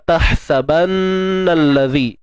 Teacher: Huruf ha pedas ni kita matikan dengan menyempitkan di bahagian tengah kerongkong. Sempitkan tengah kerongkong kita.